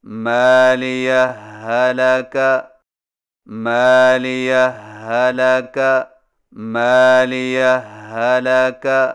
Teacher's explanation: صرف ایک مشدد ہا سے پڑھیں، یعنی اس طرح مالية هلك مالية هلك مالية هلك، اس کو ادغام کہتے ہیں.